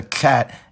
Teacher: My first prediction is that the sounds that are currently aspirated will first become affricates, and then straight-up fricatives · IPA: [k͡xæt̚]